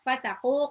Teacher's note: Alladzina, zalnya mad tabi'i 2 harokat. Fasaqu, qafnya mad tabi'i 2 harokat